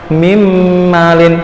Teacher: Mimmalin, harusnya kan min malin, tapi karena ini idgham biguna, jadi huruf nunnya dihilangkan, dimasukkan ke huruf mim, jadi langsung mimmalin. Mimmalin, dengung ya, dua ketukan